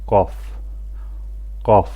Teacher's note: Bu hərf dilin kökündən ortasına doğru olan hissəsini yuxarı damağa toxundurmaqla tələffüz edilir. Azərbaycan dilində olan qız səsinin oxşarı qalın və kobud formasıdır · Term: qaf hərfi